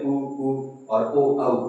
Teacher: ऊ और ओ औ जब हम बोलेंगे तो हमारा मुख है वो वृत्त के आकार का हो जाएगा